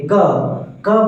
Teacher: क बोलने के लिए आपको अ की सहायता लेनी पड़ रही है।